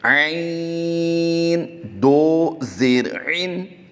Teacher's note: عین کی ادائیگی حلق کے درمیان والے حصہ سے کریں گے